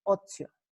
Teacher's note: En primer lugar, vemos que la T se ha convertido en una dentoalveolar africada sorda y que la vocal posterior, la posterior alta se ha abierto hasta convertirse en posterior media